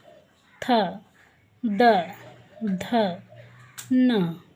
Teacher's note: ता को बोलते हैं तो जीभ जो होती है दांतों में टच होती है